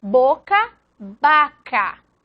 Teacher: ambas se pronuncian en todos los casos como bilabiales